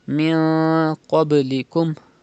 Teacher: There is qaf after noon sakin, and qaf is from ikhfa letters, so ikhfa will be done, ghunna will be done in noon sakin. You have to pronounce like this, min qablikum, and also pronounce qaf with thicker voice because it is a mustaliya letter, and do qalqala in ba.